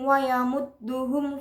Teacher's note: Dapat hukum bacaan idhar syafawi karena mim sukun bertemu waw jadi dibaca jelas